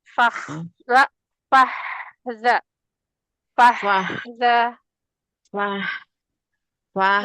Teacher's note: Fahza h-nya yang tengah tenggorokan.